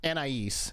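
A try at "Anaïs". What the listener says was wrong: No. So it's spelled Anais, but the S is silent. Although you kind of said it the French way. But it's a nay. In French, it's like Anais or something.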